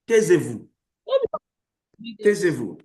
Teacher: Now, when you say taisez-vous, in that context, our emphasis is on that word vous. Taisez-vous is an order.